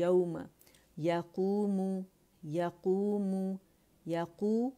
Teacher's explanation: واو ساکن سے پہلے ہمارے پاس زبر آ رہی ہے، تو یہاں پہ ہمارے پاس واولین ہے